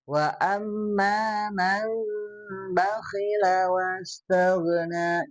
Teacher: Kalau ini mah nun atau tanwin ketemu dengan huruf ba, maka disebut iklab. Jadi nun dan tanwinnya diganti dengan mim. Nah, jadi bacaannya wa amma man bakhila wastaghna.